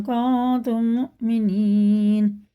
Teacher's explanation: میم ساکن بعد میم آ رہا ہے، یہ بھی ادغام شفی ہے، یہ غنہ ہے